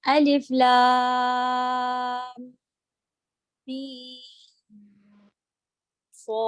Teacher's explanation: یہاں پر تو میم کے بعد میم ساکن کے بعد صاد آ رہا ہے، اظہار کریں گے ہم